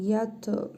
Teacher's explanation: Ta hərfinin üzərində cəzm var. Qalqalə edərək oxuyuruq.